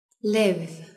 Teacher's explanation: chúng ta chỉ cần chạm môi trên vào răng dưới và đẩy hơi ra được nhé Nhớ dùng cả dây thanh quản nữa